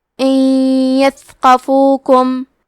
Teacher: ہم نون ساکن کو یا میں ملا کے غنہ اور تشدید کے ساتھ یہ حکم کو ادا کریں گے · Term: ادغام بغنہ